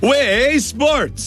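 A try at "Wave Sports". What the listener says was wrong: It's not way, it's wave. Enunciate.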